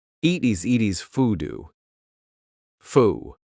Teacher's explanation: What happens to that final D? We just cut it off, foo, and we're cutting off the next D.